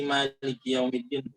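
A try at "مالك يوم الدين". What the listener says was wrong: بدون زيادة. مالكي لا لا لا لا مالكي يوم الدين.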